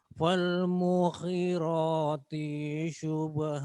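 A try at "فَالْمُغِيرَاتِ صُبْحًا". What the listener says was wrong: Nah, hati-hati huruf gha itu kadang memang nyasarnya ke kho. Falmughi, jangan mughi, mughi. Di sini mughi. Nah, enggak pakai ngorok. Ghi. Bukan ghi, tapi ghi. Gho. Bukan go, bukan kho. Bukan mugi, bukan mughi, tapi mughi. Di tengah tenggorokan sini. Pangkalnya mughi. Mughi. Mughi. Gho.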